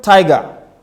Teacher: And by the time you make the sound g, you come low. So you have one stressed syllable followed by an unstressed syllable.